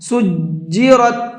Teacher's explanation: جیم کے اوپر تشدید ہے تو اس کو ڈبل پڑھنا ہے، ہلکا سا رکنا ہے، سجیرت، اس طرح سے۔